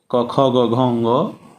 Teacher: जब आप क ख ग घ ङ कहेंगे तो जिह्वा कहीं जाकर के स्पर्श नहीं कर रही है, सीधे कंठ से ये वर्ण निकलते हैं। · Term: कवर्ग